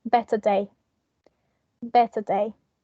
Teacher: we are not going to pronounce the r sound in the middle because they start with a consonant sound so we are not going to include the link in r